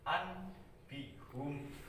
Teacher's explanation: Nun mati itu dibalikkan menjadi mim mati. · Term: iqlab